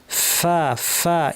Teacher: দাঁত ঠোঁটের উপর লাগিয়ে ফ্যাস ফ্যাসে আওয়াজ, প্রচুর আওয়াজ, প্রচুর বাতাস। ফা ফা, এই ফাটাও আমাদের অনেকে চাপা হয়, অনেকে ফা বলেন।